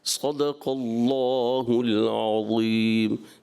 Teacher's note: صدق اللہ العظیم میں قاف آپ کا تھوڑا سا متاثر ہو گیا، صدق اللہ العظیم، یعنی آپ نے قاف کو بھی پر رکھنا ہے